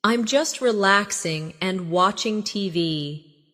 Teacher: Notice the flow. No long pause between relaxing and and.